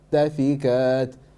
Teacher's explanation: Try to clear hamza. So this is called the glottal stop, and the hamza needs to come out clearly.